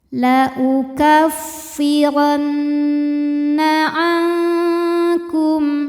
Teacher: Cara bacanya dengung. Jadi bunyi n tahan sampai ada suara masuk hidung kurang lebih 2 harokat. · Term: gunnah musyaddadah